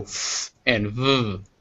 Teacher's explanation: they're made with the teeth and the lower lip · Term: labial Dental